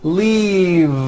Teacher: keep the voicing going throughout the whole word and voice the v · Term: voiced v